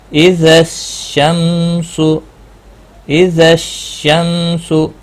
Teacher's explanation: ال کا لام نہیں پڑھا جائے گا کیونکہ آگے صاد آیا ہے، حروف شمسی میں سے ہے، اس لیے نہیں پڑھا جائے گا۔ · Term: ادغام شمسی